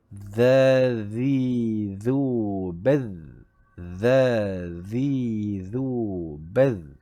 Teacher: hujung lidah dijelikan sedikit melepasi gigi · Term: huruf zal